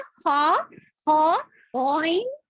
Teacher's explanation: اور خا وائن یہ اپر تھروٹ سے نکلتے ہیں. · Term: اوپر والے حلق